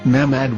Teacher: or as mehmad with no a after the h